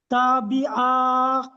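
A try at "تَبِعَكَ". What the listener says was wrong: টান দিচ্ছেন কেন? তাবিআকা।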